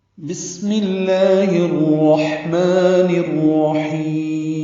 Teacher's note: بسم اللہ میں سین ساکن سیٹی جیسی آواز سے · ہا کو وسط حلق سے ادا کرنا ہے، لمبا کرنا ہے اور میم ساکن پہ رک جانا ہے، سانس توڑ دینا ہے وقف کرتے ہوئے ملانا ہے۔